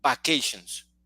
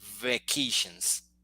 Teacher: There is a vibration at the beginning.